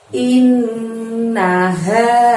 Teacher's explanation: ha di sana mengucapkannya dari tenggorokan bagian dalam, jadi agak lebih tebel.